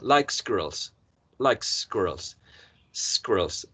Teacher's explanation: this sound in squirrels is not the pure s when we say isolated but there's some sort of assimilation here because C is setad up influencing the next s sound like